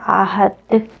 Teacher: دال کے اوپر جب بھی سکون ہو تو ہم نے اس کو قلقلہ کے ساتھ ادا کرنا ہوتا ہے